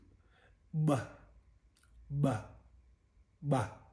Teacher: And then the implosive version, which is unique, which is a unique plosive out of the four different variants or versions or types of plosives. It's a implosive ba, ba, ba. So you are pulling air in